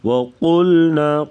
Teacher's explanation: قاف کو موٹا اور لام کو باریک پڑھیں گے